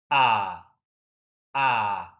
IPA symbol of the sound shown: ɑ: